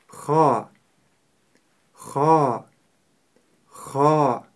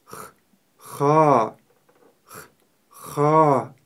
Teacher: Буква Х твердая. И у нее есть характерный хрип.